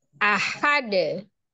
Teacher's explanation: Ahad dal n diwakafkan maka menjadi sukun karena yang disukunkan adalah huruf Dal salah satu huruf Qalqalah kan dibacanya adalah dipantulkan dan posisinya adalah di akhir atau ketika diwakafkan maka dalnya qqalahnya